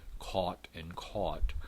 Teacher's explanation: Occasionally you'll hear a rounded form, an open O form